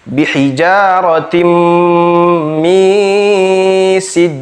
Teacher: Kemudian pada lafaz bihijaratim ada mim ditasydid, maka kita tahan dan didengungkan membacanya